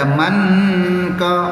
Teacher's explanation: Bila baca manka, nun dia tak boleh bunyi nun sebab dia adalah dipanggil ikhfa. Ikhfa hakiki.